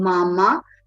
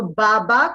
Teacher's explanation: where there is a very clear nasal consonant substituted for the oral consonants